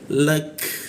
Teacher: cara mematikan ka itu ada hembusan udara sedikit